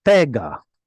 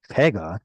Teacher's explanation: Now we would expect it to be tzere segol, but because of the ain, it actually prefers an ah sound. It's a pega.